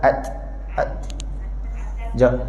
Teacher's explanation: Makhraj huruf ta memang dekat belakang gigi atas.